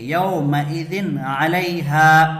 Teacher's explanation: یہاں دو زبر کی تنوین ہے، تنوین کے بعد کیا آ رہا ہے حروف حلقی میں سے؟ عین آ رہا ہے، تو یہاں پر غنہ نہیں ہوگا، اس کو ظاہر کر کے جلد پڑھیں گے،